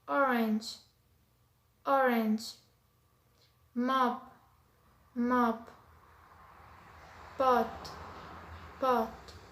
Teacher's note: This is a short sound and its horizontal position is back and its vertical position is low. As example, we have orange, orange, mop, mop, pot, pot.